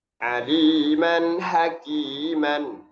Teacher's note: izhar nun sukun ataupun tanwin ketemu dengan ha. Ha yang tengah tenggorokan.